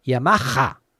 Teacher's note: the H in Yamaha is over pronounced